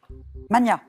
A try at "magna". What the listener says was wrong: En français, on entend souvent mania, et en fait, on doit le prononcer comme pour Magnus. Donc c'est Magna, même si on l'entend moins, hein, mais voilà.